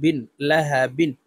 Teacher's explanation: দুই জের বিন লাহা বিন বাকে ওয়াকফুর ক্ষেত্রে সাকিন করে ফেলবো বা কলকলার হরফ নিচের দিকে ধাবিত করে ধাক্কা দিয়ে উচ্চারণ করব